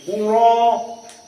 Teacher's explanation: dibaca dalam keadaan hamzahnya diganti Alif dan jadi Mad